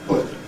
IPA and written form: pɵt (put)